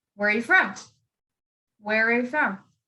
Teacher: open-ended questions, you would ask it like a statement. You'd go up and then you would go down.